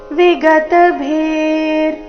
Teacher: ವಿಗತ ಭೀರ್ ವಿಸರ್ಗದ ಉಚ್ಚಾರಣೆ ಅರ್ಧ ರ ರೀತಿ.